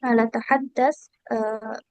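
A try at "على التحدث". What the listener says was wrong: Sedikit koreksi Kak ya, kita bilangnya alat tahadus, pakai masternya. Alat tahadus, nah gitu ya, laisa tahadas. Oke, atau nanti boleh dirangkai ala tahadusil Arabiyah.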